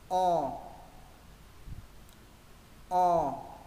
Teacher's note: chữ o thứ hai mọi người phát âm tròn môi và nâng cuống lưỡi